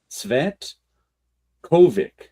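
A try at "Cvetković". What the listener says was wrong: And if the last letter is a C, it's not pronounced Kovic. The C probably has a hat at the end.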